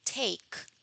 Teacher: the tip of the tongue touches the alveolar ridge